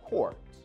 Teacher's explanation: the O sound in caught actually changes when it is pronounced before an R sound, and it becomes a more rounded O sound. And it will sound very different from the original O sound in caught.